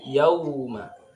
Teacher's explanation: waw sukun ini ketika dibaca bunyinya ke u, yauma, tidak boleh ke o, miring bacanya.